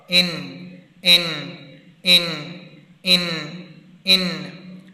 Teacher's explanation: اوپر والے جو ہمارے دانت ہیں، یہ سامنے والے 4 دانت، ان کے مسوڑوں کے ساتھ ہماری زبان لگے گی تو پھر نون ادا ہوگا